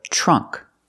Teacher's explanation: The middle part of a tree is called a trunk. We see the TR making the ch sound.